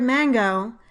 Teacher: For example, in the word mango, the first syllable has primary stress and the second syllable has secondary stress